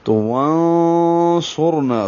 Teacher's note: نون کو موٹا نہیں پڑھتے بلکہ اخفا کی آواز کو موٹا کرتے ہیں. تو وانصرنا صاد پر ہے موٹا ہوگا.